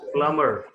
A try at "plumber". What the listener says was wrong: It is not plumber. B is not there at all. You don't say B. P-L-U-M-E-R.